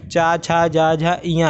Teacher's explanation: ये तालु से बोले जाते हैं। कंठ मतलब गला, तालु मतलब जीभ के ऊपर का हिस्सा। ठीक है, जीभ के जो ऊपर का हिस्सा है वो तालु।